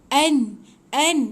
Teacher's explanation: Hujung lidah tahan dekat lelangit atas. Dia bukan dua bibir tutup. Jangan tutup dua bibir. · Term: nun mati